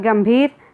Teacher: गंभीर ग के ऊपर अनुस्वार का प्रयोग होगा क्योंकि गम बोलते समय केवल नाक से हवा निकलती है